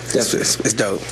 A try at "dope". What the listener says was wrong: That is dope. You can't pronounce the P. You're pronouncing the P. It's dope. Yeah, you can't say dope.